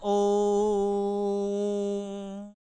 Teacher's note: जब इसकी मात्रा दो से अधिक हो गया, जैसे हम बोलते हैं ओम, ये ओम का लंबा खींच दिया तो ये प्लुत हो गया। और प्लुत हो गया तो इसकी मात्राएं तीन हो गई, ऐसा मान लिया जाए।